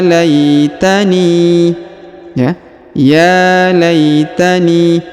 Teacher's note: huruf ya dipanjangkan dua harakat karena di atasnya terdapat tanda Alif kecil